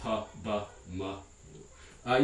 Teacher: made by bringing the 2 lips together, the upper lip and the lower lip, or sometimes by protruding those 2 lips to make a rounded shape. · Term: bilabial